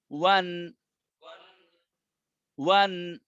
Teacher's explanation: এই যে দুই ঠোঁট গোল করলে ওয়াও হবে, আর জবর হইলে মুখ উপরের দিকে খুলবে। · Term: দুই জবর